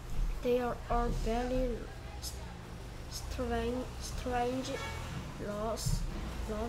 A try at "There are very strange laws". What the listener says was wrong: There are very strange laws. They가 아닙니다. There are very strange laws.